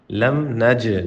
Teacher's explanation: جیم پہ جھٹکا دیں، قلقلہ کریں